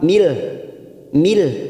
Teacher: nun sukun bertemu lam idgham bila gunnah, hanya masuk tanpa mendengung, siap masuk ke huruf lam. Mil, mil ya, hanya masuk tanpa ditekan lama-lama, namanya bacaan idgham bila gunnah.